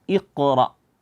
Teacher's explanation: ah kita di sini langsung menemukan Qalqalah itu Hamzah bertemu dengan huruf qaf yang sukun makanya di sini kita nampakkan qalqalahnya Iqra e jangan dibaca IQ IQ dengan Hamzah tapi IQ IQ